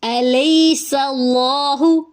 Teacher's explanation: الیس اللہ، لئی پہ جائلین ہے، سین میں سیٹی کی آواز ہے، سین کی زبر کو لام سے ملائیں گے، لام اس میں جلالہ پر ہوگا یعنی موٹا ہوگا